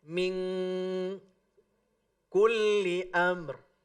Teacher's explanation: Kalau ikhfa ab'ad, maka huruf yang keluar ketika menyebutnya bukan en, tetapi eng.